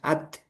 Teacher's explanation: Ta itu kan juga syiddah dari segi suara at at cuman bedanya setelahnya. Kalau ta setelahnya itu ada hames at dilepas jadi udara at.